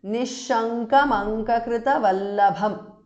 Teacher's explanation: Now, Nishankam Ankakrita Vallabham. Because Nishankam ends in M and Ankakrita Vallabham begins with A vowel. So, this M and A join together to form Ma.